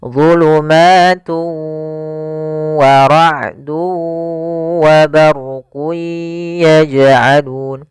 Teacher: cara membacanya tanwinnya dimasukkan ke huruf waw dan ditahan gunnahnya. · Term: idgham bi gunnah